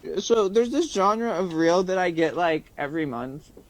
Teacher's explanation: Listen to how she says there, this, and that without th stopping.